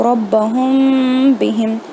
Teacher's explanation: اگر میم ساکن با کے پہلے آتا ہے تو ہمیں اسے گناہ کر کے پڑھنا ہے، 2 سے 3 سیکنڈ تک کھینچنا ہے اور نیسل ساؤنڈ میں